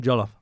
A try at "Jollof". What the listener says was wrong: Don't say it too quick. We talk slow.